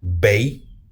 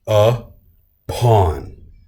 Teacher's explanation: an unstressed syllable followed by a stressed syllable. So the beat is going to fall on the second part of the syllable